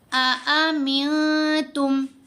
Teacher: احفا کا مطلب ہے چھپانا، نون کی آواز کو ناک میں چھپا کر پڑھا جاتا ہے جب ہم احفا کرتے ہیں